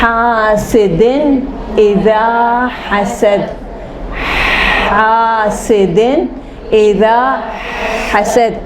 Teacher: ہوا نکالنی ہے، بالکل ووکل کارڈ کو نہیں یوز کرنا ہے، صرف ہوا نکالنی ہے